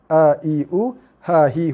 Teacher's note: Sama juga apabila kita membaca huruf Hamzah dan Ha. Hamzah dan Ha di duduk kawasan pangkal leher, leher paling bawah yang merupakan kawasan makhraj yang sempit ruangannya. So bunyi hurufnya pun kecil.